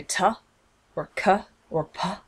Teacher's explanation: it's that puff of air that comes out when I say T or C or P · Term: aspiration